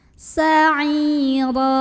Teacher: Mad tabi'i karena ada ya sukun yang didahului kasrah, dibaca panjang, ainnya 2 harokat. Sa'ira, huruf ra dibunyikan secara tafkhim karena ro-nya berbaris tanwin fathah, maka bacanya ditebalkan. Sa'ira. Dan apabila berhenti di sini hukumnya adalah mad iwad karena ada baris 2 di atas tanwin fathah yang kita berhentikan atau kita wakafkan.